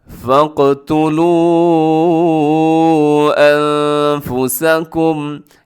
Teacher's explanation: फ़क़तुलू अनफुसकुम, यहाँ पर भी छोटी मद है। अनफुसकुम में इख्फ़ा है, आवाज़ को नाक में छुपाना है।